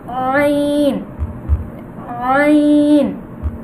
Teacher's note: আইন হলকের মাঝখান থেকে সঠিকভাবে করতে হবে